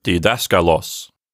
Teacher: the pitch of the voice goes up a little bit naturally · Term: stress accent